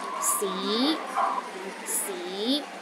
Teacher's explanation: the second tone start with a low pitch and Rises to a high pitch